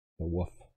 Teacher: I've known many people in my life who say woof instead of wolf. And then they kind of drop the L sound.